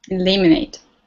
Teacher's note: You emphasize the second syllable.